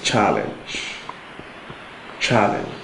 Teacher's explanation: Challenge, which has stress on the first syllable, while the others have on the second syllable.